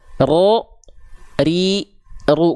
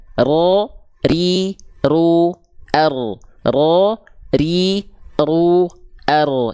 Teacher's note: yang berlebihan Jadi huruf ro itu dilafalkan cukup ro r r getarannya ada tapi bukan Getaran yang berlebihan R R R ro ri ru R Jadi bukan Getaran yang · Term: takrir